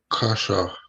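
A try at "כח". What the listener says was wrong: So with this last letter, with this the CH in like the English, you pronounce it as a k sound, right? So it'd be like kach, right? Like kach. So ha kach, right?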